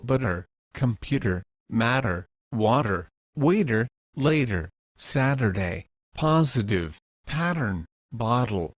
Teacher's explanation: for the soft D sound your tongue needs to Flap up to the bottom Ridge of your upper gums